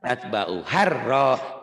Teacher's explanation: Sudah bagus, tapi rohnya jangan kelamaan.